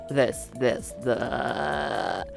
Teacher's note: Vocal fry is when the voice does this kind of rough, almost gravelly sound. Instead of a clear voice like this, you have a sound like this.